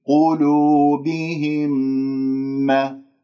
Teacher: ميم مع ميم إدغام متماثلين والغنة تكون بمقدار حركتين. قلوبهم ما، لا تقول مرض، لا تفخم الميم بسبب مجاورتها للراء المفخمة والضاد المفخمة، فأنت تقول ما مرض.